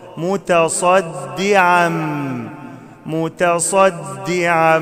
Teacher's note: أخلي بالي من الدال علشان ما أقلبهاش لضاد